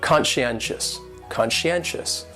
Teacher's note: conscientious has four syllables and the stress is on that third syllable